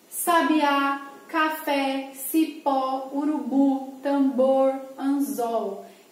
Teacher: Todas essas palavras têm a última sílaba tônica, por isso são classificadas como oxítona